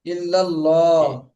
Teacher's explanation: আল্লাহ শব্দের লামের ডাইনে জবর, ইল্লাল্লাহ। মোটা হবে।